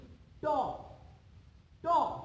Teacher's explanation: তালুর ঠিক উপরের অংশটা, যেখান থেকে উচ্চারণ করতে হলে আমাদের জিহ্বাটাকে সামান্য উল্টাতে হয় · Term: মূর্ধন্য